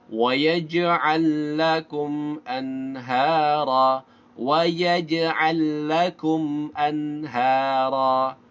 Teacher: An nunnya jelas ya. Ini adalah idhar halki.